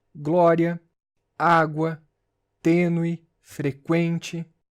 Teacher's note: Observem que em água e em frequente, o U é pronunciado, formando ditongo. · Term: Ditongos crescentes